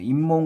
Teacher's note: 그런 경우에는 니은이 하나 생긴다는 거예요. 그러니까 사이시옷이 음운 변동을 겪어서 니은으로 발음된다는 거예요. 그러니까 이 조건이 일어나려면 반드시 복합어여야 합니다. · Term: 니은 첨가